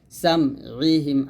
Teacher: মাঝখান থেকে চাপ দিয়ে বলবেন, হামজার মতো যেন না হয়ে যায়। তাহলে একসাথে হবে খতামাল্লাহু আলা কুলুবিহিম ওয়া আলা সামইহিম।